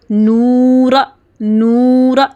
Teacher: واو مد کی آواز کو تھوڑا کھینچنا ہے، 2 حرکے کے برابر لمبا کرنا ہے، ٹھیک ہے، زیادہ لمبا نہیں کرنا، تاکہ پتہ چلے کہ یہاں پہ ہم نے حروف مد واو ادا کیا ہے، نورا، نورا ہے۔